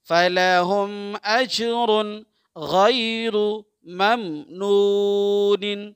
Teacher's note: یہاں اظہار ہوگا را پہ دو پیش کی تنوین اس کے بعد غین